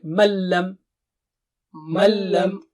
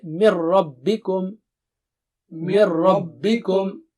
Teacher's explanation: اگر نون ساکنہ کے بعد لام اور را آئے تو اس صورت میں غنہ نہیں ہوگا اور نون ساکن پورا ختم ہو جائے گا. اس لیے کہ لا نارا تینوں کا مخرج ایک ہے، تو لام پر جب تشدید ہو تو آپ اس کو پڑھ بھی نہیں سکتے.